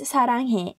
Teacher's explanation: It sounds similar to the English alphabet S. But it is slightly lighter than S.